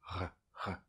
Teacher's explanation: un léger petit R français qu’on fait ici, comme les gargarismes, il est très léger